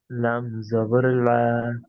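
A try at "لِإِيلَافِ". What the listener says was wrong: লাম জবর লা নয়, ওটা লাম খাড়া জবর লা। ই, লা, হাজের ফি।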